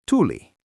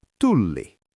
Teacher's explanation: You have to stretch that L.